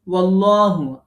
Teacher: আল্লাহ শব্দের লাম পোর হবে, একালিফ মাদ হবে